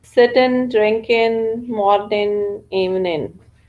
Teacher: lower social class will always pronounce sitting, drinking, morning, evening instead of pronouncing g sound in the end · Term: na sound